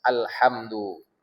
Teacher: Lam sama ha jauh, satu di ujung, satu tenggorokan. Sudah lain rumah pula itu. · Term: qamariyah